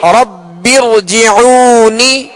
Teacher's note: اس را کو بھی پر پڑھیں گے اس لیے کہ را ساکن سے پہلے زیر دوسرے کلمہ میں ہے